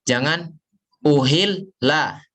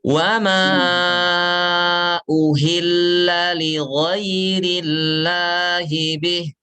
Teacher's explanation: Jadi ketika kita baca lam bertasdid, jangan sampai putus ya.